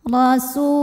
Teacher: Huruf ra dibunyikan secara tafkhim karena ra berbaris fathah, maka dibaca tebal. Rasu. Su mad tabi'i dhahiri karena waw sukun didahului baris dhammah, maka sin panjang 2 harokat.